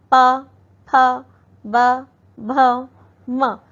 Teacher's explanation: अगला है ओष्ठय। ओष्ठय होता है जो हम होठों की सहायता से बोलते हैं।